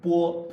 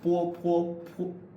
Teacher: Non-aspiration, right? So think of bo as having no path of air and po as a stronger path of air